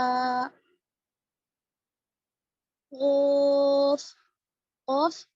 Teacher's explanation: زبان کی جڑ کو اوپر کے تالو کے ساتھ لگانے سے نکلتا ہے